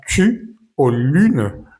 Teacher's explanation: Por ejemplo, para el sonido u de la palabra chu o lun. Los labios deben estar muy muy redonditos más que en español.